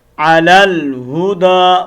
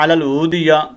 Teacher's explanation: ایک الف کے مطابق دال کو لمبا کریں گے